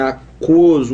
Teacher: Aquoso, o U é muito pouco pronunciado, mas o O já é muito forte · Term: ditongo crescente